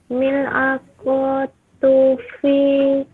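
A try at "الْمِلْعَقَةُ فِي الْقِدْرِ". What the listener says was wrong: Ada alif lamnya, ada alif lamnya.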